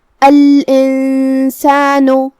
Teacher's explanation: اخفاء کا معنی ہے چھپا دینا، تو ہم یہاں نون ساکن کو چھپائیں گے اور نون کو بغیر ظاہر کیے ہوئے لیکن غنہ کے ساتھ یہ حکم کو ادا کریں گے. الانسان آخر میں نون پہ پیش ہے تو اس کا دھیان رہے.